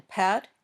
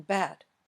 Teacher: your mouth moves in the same way for both sounds the difference is what's happening in your throat in your vocal cords